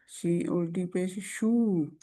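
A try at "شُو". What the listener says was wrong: नो, शू नहीं होगा, सख्ती से नहीं करेंगे। शू, नरमी से शू, क्योंकि इसका मखरज बदल जाएगा, जगह निकलने की बदल जाएगी अगर छू करेंगे।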